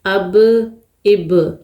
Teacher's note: یہاں پر ہم نے با کے اوپر قلقلہ کرنا ہے کیونکہ با ساکن ہے، حروف قلقلہ میں سے ہے، قلقلہ ہوگا اب۔